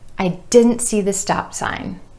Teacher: I'm holding that final P with the lips together and going straight into the S for sign.